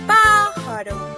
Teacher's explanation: En la palabra pájaro, la sílaba tónica es pa, mientras que las otras dos son las sílabas átonas.